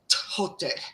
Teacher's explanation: It was an aspirated T, which is basically a T with a puff of air behind it. So if we take the ancient Greek writing of this god's name and try to pronounce it, I'm going to butcher it, but it would be something like Thoth.